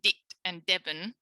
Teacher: if they're saying dick and debbie then they haven't even got a fricative